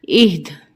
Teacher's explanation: حمزہ ہا زیر ای، دال زیر دی، دی، آگے وقف اہد۔ اب دال جو ہے یہ حروف قلقلہ ہے، تو یہاں پہ ہماری آواز وقف کی صورت میں پلٹ کر آئے گی